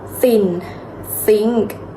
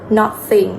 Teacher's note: air out through the narrow Spade between the tongue and teach do not use vocal cord it should be just air with no vibration